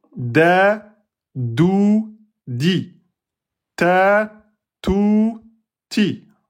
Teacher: L'extrémité de la langue, en appuie sur la racine des incisives supérieures.